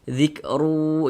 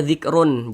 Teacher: Tapi dibaca zikru begitu bunyi tanwinnya masuk ke huruf wau kemudian didengungkan. Jadi suaranya itu kita tahan kita panjangkan sejenak. · Bunyi tanwinnya dimasukkan ke huruf waw. Kita baca zikru, jangan dibaca zikrun, jangan, tapi dibaca zikru begitu. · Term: idgham bighunah, idgham bi gunnah